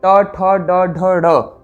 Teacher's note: तत्पश्चात टू से ट वर्ग, ट ठ ड ढ ढ, र और मूर्धन्य सकार का उच्चारण होता है मूर्धन्य स्थान से